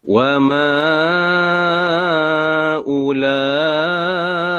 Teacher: Dan ulaika ni memang wajib. Sebab dia mad wajib, memang wajib baca 4 ataupun 5 harakat.